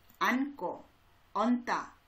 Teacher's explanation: 니은과 지읒 중에 니은이 소리가 나고요.